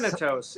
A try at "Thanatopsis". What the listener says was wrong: Thanatopsis. missing off like half the letter.